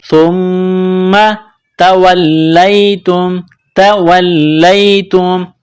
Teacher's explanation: میم مشدد ہے تو یہاں آواز ناک میں چھپائیں گے، غنہ کریں گے